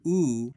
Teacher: ooh which has a tight lip rounding